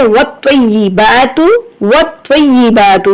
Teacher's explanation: واو کو تو سے ملائیں گے، پھر تو کو یا سے ملائیں گے اور سختی سے۔ جو تشدید جیسے ہی آپ کو نظر آئے تو تشدید جو ہے سختی اور جماؤ چاہیے، سختی اور جماؤ کے ساتھ پڑھنی ہے۔